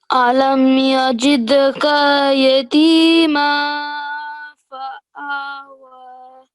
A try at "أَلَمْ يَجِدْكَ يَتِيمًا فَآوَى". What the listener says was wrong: Yeah, and this one just need to work a little bit harder on that nasal sound. Yatima, like this, because it sounded a bit like you were saying yatima, and it's not ma.